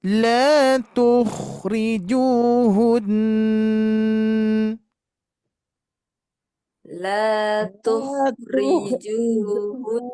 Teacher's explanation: Hati-hati, ju-nya di sini 2 harakat. Domah bertemu waw sukun.